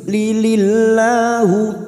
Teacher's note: lam jalalah yang didahului kasroh kita baca tarkik. Lilillahu, la kita panjangkan 2 harokat.